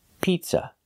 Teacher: up pizza it's a closed sound for the second syllable and make sure the stress is on the first syllable · make sure the stress is on the first syllable, pizza. Not pizza, but pizza.